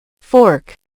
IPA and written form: fɔːrk (Fork)